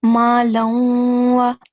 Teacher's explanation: here we are doing idgham with the nasal sound